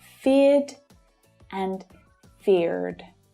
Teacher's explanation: In Australia, we don't pronounce the final R consonant sound when it follows a vowel sound.